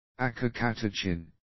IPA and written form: əkəkə'tekɪn (acacatechin)